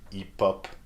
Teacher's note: the final P of the first bit of the word hip is linked to the second bit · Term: liaison